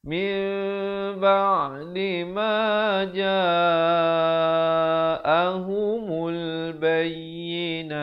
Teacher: Tapi bila datang ba jadi mim, bibir itu dia macam nak bersentuhan begitu ya. Biar ada ruang sedikit di antara keduanya dengan kadar 2 harakat. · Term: iqlab